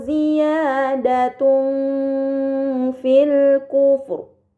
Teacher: Kemudian pada kata ziyadatun fil kufur terdapat harokat dhammahtain bertemu dengan huruf fa. Ini dinamakan ikhfa hakiki, maka dhammahtain dibaca secara samar dengan gunnah yang dipanjangkan